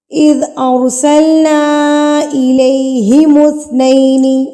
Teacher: مد منفصل ہے. اس کو 3 حرکات کے برابر کھینچیں گے